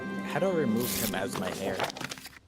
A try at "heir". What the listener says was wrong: Air. The H is silent.